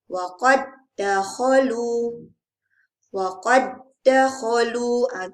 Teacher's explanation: Jadi dal yang pertama kita tiadakan. Terus sebut dal yang kedua. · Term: idgham